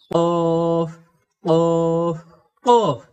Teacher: যে কফ অক্ষর জিহ্বার গোড়া থেকে কাকের আওয়াজের মতো মোটা করে পড়তে হয়